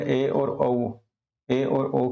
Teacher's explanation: अर्धसंवृत जिसमें जो है मुख आधा खुला रहता है, आधा बंद रहता है।